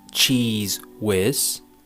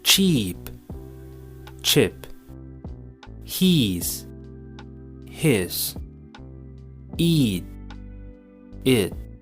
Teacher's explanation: the first e sound is longer and clearer the second e sound is shorter and darker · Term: minimal pairs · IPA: /I:/